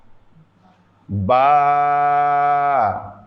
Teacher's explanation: বা এক আলিফ টান ঠোট থেকে উচ্চারণ হবে